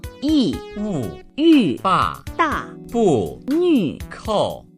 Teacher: Fourth tone, the command tone, sharp and falling.